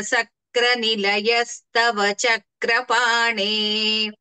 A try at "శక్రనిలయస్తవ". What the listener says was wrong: అక్కడ తాళవ్య శకారం ఒకటే ఇంకా కొంచెం మొహమాటంగా ఉంది. శక్ర అని అలా కాకుండా సక్ర గాని చక్ర గాని కాకుండా శక్ర అలాగే